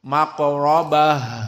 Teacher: ta at-ta'nits dibaca dengan ha at-ta'nits, maka di sini dibaca dengan ha dan ada hams